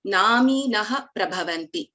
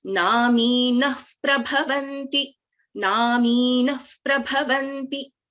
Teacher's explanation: So we don't pronounce the full Visarga in this case. So that is Upadmaniya.